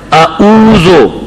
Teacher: عین کو حمزہ کی مخرج میں ادا کرنا یہ غلطی ہے